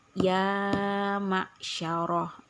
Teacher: cara membaca mad thi'i adalah dipanjangkan dengan satu Alif satu Alif itu adalah dua harakat atau dua ketukan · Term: Mad thobii